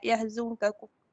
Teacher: nun mati bertemu dengan kaf, hukum dia ikhfa hakiki. Lepas tu bila ikhfa hakiki ni, cara bacaan dia tu ada macam syaddah sikit. Bila syaddah, dia termasuk dalam larangan idgham bagi Susi.